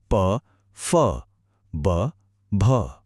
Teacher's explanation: प वर्ग जिसमें दोनों होठ आपस में मिलते हैं।